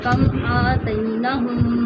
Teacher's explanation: ایک میم دوسرے میم کے اندر مرج ہو گیا ہے. ٹھیک ہے. اس مرجنگ کا نام الگ سے ہے مثل صغیرین. · آتیناہم پر بھی غنہ ہوگا کیونکہ میم کے اوپر شد آئی ہے دوسرے میم پر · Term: ادغام مثل صغیرین